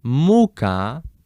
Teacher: you put the stress on the first syllable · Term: accentation